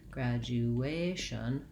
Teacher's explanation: Graduation has third syllable stress, so the A syllable is held longer and has a clear vowel.